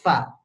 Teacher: gigi atas dengan bibir bawah diadu nih ya gigi atas dengan bibir bawah Fa Jangan dibalik jangan bibir atas mengadu dengan gigi bawah Fa